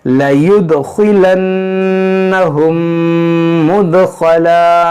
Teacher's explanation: यहाँ पर देखें दाल साकिन है, इसमें कलकला करेंगे, खा को मोटा पढ़ेंगे क्योंकि हुर्फ़े मुश्तालिया है